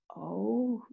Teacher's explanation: O, we engage the lips. O, rounding them.